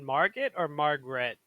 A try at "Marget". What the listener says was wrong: Basically, it's spelled like Margaret without the R, without the second R. Marget.